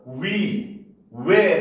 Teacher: 단모음이지만 이중모음으로 발음하는 것도 허용한다